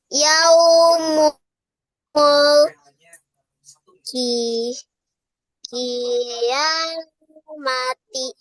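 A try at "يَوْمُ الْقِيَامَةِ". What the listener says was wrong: Mati atau mah? iya, yaumul kiamah.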